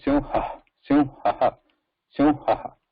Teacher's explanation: Then ha also has the vibration there. Now the visarga, when it is pronounced, it is similar effort but absence of vibration. Like it's a whisper.